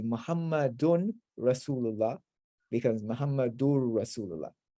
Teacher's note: in front of the R and the L, the noon completely merges into it, and you don't have any nasalization there